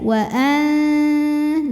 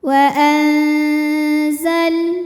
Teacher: Lalu berikutnya ada hukum ikhfa awsat karena ada nun sukun yang menghadapi huruf zai. Maka cara bacanya nunnya dibunyikan samar-samar, siap-siap ke zai, wa an disertai dengungan.